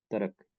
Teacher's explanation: the word Turk is used, Turk, with palatal reduced vowels